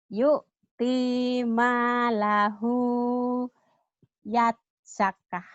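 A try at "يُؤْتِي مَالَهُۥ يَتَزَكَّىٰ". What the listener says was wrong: Yatazakka. Tanya ketinggalan. Diulang balik.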